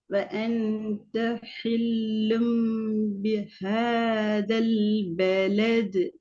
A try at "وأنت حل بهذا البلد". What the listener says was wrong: பிஹா பிஹ பிஹ மூச்சை விடணும் நார்மலா ஹேன்னு தான் போகணும் ஹான்னு போகக்கூடாது